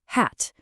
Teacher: For H, it's just a breathy push of air.